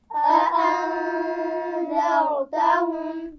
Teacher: अअन्ज़रतहुम की मीम पर गुन्ना नहीं होगा क्योंकि उसके बाद हमज़ा है